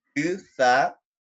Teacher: el sa es una D interdental